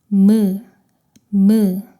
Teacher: 입술을 다물었다가 벌리면서 나는 소리입니다. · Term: 미음